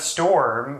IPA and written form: stoɹm (storm)